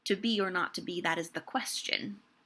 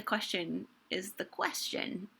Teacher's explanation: if the last word of the line is a multi-syllable word and the last syllable of that word is not a stressed syllable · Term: feminine endings